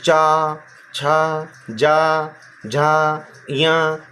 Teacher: जब भी आप ये बोल रहे हैं तो आपकी तालू से आवाज़ आ रही है।